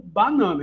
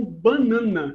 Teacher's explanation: uma consoante nasal perto é o caso da palavra banana né aqui no sudeste a gente realiza como banana Então a primeira vogal aberta oral entretanto em alguns dialetos do Norte e Nordeste realiza-se como banana